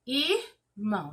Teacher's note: eu vejo que a sílaba mais forte, ela é a última · na palavra irmão, a sílaba tônica é mão. Irmão, sílaba tônica, mão. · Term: oxítona